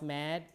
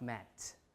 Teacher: when you pronounce mad you pronounce it kind of uh a little bit a lengthened version of mat